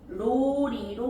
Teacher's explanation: 자, 물놀이는요 물로리로 바뀌죠. 그래서 리을이 니은을 만나서 리을로